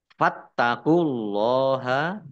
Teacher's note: Fattaqullaha, taknya dibaca double, ada tasdidnya. Allahnya dibaca tebal karena harokat di depannya dhammah.